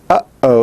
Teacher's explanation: you have that little stop that is made in the back of your throat as by using the epiglottis it's called a glottal stop so